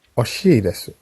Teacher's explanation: The pronunciation of I here is really short and weak